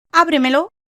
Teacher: Ejemplo, la palabra ábremelo lleva tilde simplemente porque tiene su fuerza de acentuación en la sílaba anterior a la antepenúltima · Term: palabras sobreesdrújulas